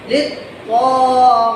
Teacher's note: غین زیر یا ایک الف کے برابر لمبا ہوگا کیونکہ یہ ہے یائے مدہ. یا ساکن، یا سے پہلے آگے زیر، اس کی شرط مکمل ہوئی یا مدہ کی، یہ بنا غین زیر یا.